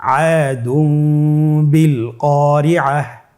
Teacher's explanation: এখানে দালের উপর তানবিন রয়েছে এবং তানবিনের উপরে ছোট্ট একটি মিম রয়েছে। তাহলে আমরা যেটি করব যে তানবিনকে মিম দ্বারা পরিবর্তন করে গুন্নার সহিত পড়ব।